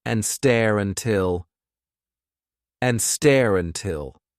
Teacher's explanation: It's an R to a vowel link, really.